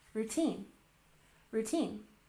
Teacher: Stress the second syllable.